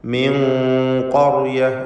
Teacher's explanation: മിൻ ഖർയ എന്ന് ഉച്ചരിക്കേണ്ടതാണ്. ഖാഫിന് തഫ്ഖീം, ശേഷമുള്ള സുക്കൂൻ നൽകപ്പെട്ട റാഇനും തഫ്ഖീം. ഖർയ എന്ന് തടിപ്പിച്ച് സ്വരഭാരത്തോടെ ഉച്ചരിക്കുക.